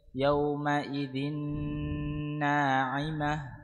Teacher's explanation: ذال تنوين بالكسر مضغم في النون مفتوحة بغنة حركتين